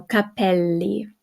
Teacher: we got the double L, so it's held a little bit longer